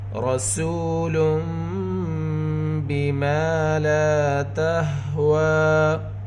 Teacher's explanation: تنوین کے بعد با ہے، یہاں پر اقلاب ہوگا، یعنی تنوین کی آواز کو میم سے بدل کر گنہ کے ساتھ اخفا کریں گے